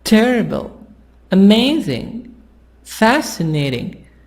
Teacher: the stress the sound is higher at the first part theory amaze the amazing fancy and then the sound goes down